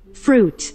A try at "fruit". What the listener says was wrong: fruit가 아니고 fruit이에요. I가 소리가 안 나네요.